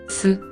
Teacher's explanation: 혀가 윗잇몸에 닿는 소리를 표현한 글자예요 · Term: 시옷